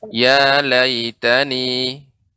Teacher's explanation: di sini ada huruf mad ya, sehingga dipanjangkan.